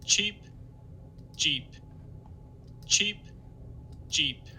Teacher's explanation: the voiceless affricates, at least the fricative part of it, is a little bit longer than what you get for the voiced affricates. cheap, jeep, cheap, jeep, And there's not much voicing, actually, during the closure phase of the j in jeep.